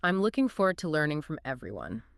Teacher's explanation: The beat, the stress, lands on the key content words: looking, forward, learning, EV, everyone. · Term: stress-timed